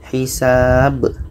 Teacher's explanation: Ba mati pada akhir ayat, qalqalah kubra.